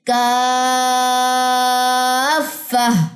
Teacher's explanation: بڑی مد کے بعد تشدید آ رہی ہے، یہاں پہ آواز اوپر کو جا کے نیچے آئے گی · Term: نبر